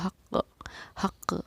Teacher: حق، آپ دیکھیے قاف پہ میری آواز لوٹ رہی ہے. حق حق، اس قاف کی آواز کا لوٹنا ہی ہمارا قلقلہ کرنا کہلاتا ہے